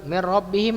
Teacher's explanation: Nun ketemu dengan ro, idgham bila gunnah.